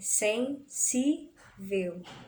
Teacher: A gente sabe que o si é a sílaba mais forte.